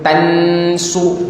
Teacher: tansu bunyinya agak tebal sedikit kerana dipengaruhi oleh huruf sad. Sad tu huruf tebal.